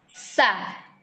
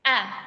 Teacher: kalau huruf hamzah dia nggak ada nih, nggak ada alirannya sebelum keluar suara. Jadi dia langsung gitu. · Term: suara tertahan